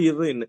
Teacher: நாக்கின் நுனி அன்னத்தோட நுனிய தொட்டா